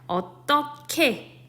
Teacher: 히읗과 기역이 만나서 키읔이라는 발음으로 변하는 현상, 거센소리 대기입니다.